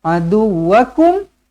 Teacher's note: mim mati izharu syafawi, matikan dengan jelas dan terang. Nak sambung ke nak berhenti ke, matikan betul-betul.